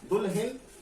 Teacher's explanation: हिन में ही पर जो है जोर लग रहा है